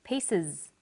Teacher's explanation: The S on the end is pronounced z because it followed an S sound.